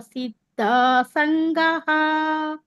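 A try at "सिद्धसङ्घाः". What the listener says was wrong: ಸಿದ್ಧ ಸಂಗಾಹ, ಗಾಹ ದೀರ್ಘ ಇದೆ.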